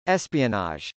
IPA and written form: ˈɛspiənɑdʒ (espionage)